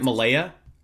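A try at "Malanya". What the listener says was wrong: I think there's an N in there. I think it's Melania.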